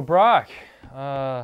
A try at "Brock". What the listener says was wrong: It's Brock. The C is a little harder than I think you're pronouncing it. Brock.